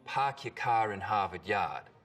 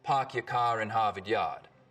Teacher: in Boston it's usually pretty fronted park your car in Harvard Yard in Rhode Island it's back